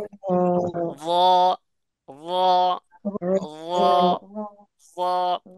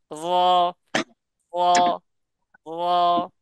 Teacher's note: জিহ্বার আগাকে মাড়ির সাথে লাগাইয়া, জিহ্বার আগাকে, এখন জিহ্বার আগা আপনি কি করে মাড়ির সাথে লাগাবেন, এটা হলো বিষয়, তাই না? আপনি যখন র বলবেন তখন দেখবেন জিহ্বার আগাটা উল্টায় যাবে · জিহ্বার আগাকে মাড়ির সাথে লাগাইয়া উচ্চারিত হয়